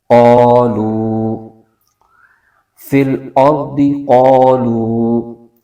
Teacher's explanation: اور آگے قاف حروف مستعلیہ کا حرف ہے، اس کو موٹا کر کے پڑھیں گے · مستعلیہ کا حرف ہے، اس کو موٹا کر کے پڑھیں گے، اور الف سے پہلے زبر آ رہا ہے، اور یہ الف مدہ ہو رہا ہے، اس کو ایک الف کھینچیں گے ۔ اور آگے واو ساکن سے پہلے پیش آ رہا ہے،